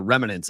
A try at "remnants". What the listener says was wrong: It's remnants, not remnants. You added a syllable It's remnants. Remnants.